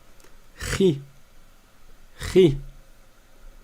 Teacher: elle sort également de la gorge, mais elle est plus haute que le ha dans la gorge. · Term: la lettre kha